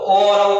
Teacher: तो ओ का और औ का उच्चारण स्थान क्या हो जाएगा? कंठ ओष्ठ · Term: कंठोष्ठ